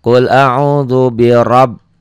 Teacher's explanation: Ra-nya juga qasar tapi ra-nya dibaca tebal. Kenapa? Karena ra-nya baris di atas. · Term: tabkhim